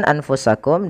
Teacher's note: ada huruf nun yang ia tidak berharakat maka kita hukumi dengan nun sukun Kemudian bertemu setelahnya Fa maka suara nunnya disamarkan